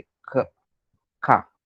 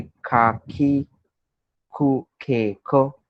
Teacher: Japanese लोगों का के प्रोनाउंस करने का ढंग भी अलग रहता है. ओके. इट्स समवेयर बिटवीन क एंड ख.